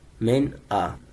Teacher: نون ساکن کے بعد حروف حلقی میں سے حمزہ ہے، تو اس لیے میں نے یہاں پہ گنہ نہیں کیا